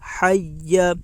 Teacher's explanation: ہا کے اوپر زبر ہے، زبر کو جلدی پڑھیں، تھوڑا بھی نہ کھینچیں۔ یا کے اوپر تشدید ہے، تشدید والے حرف کو 2 مرتبہ پڑھتے ہیں، ایک بار پہلے والے حرف سے ملا کر اور ایک بار خود اسے۔ تشدید کی آواز میں ایک قسم کی سختی ہوتی ہے۔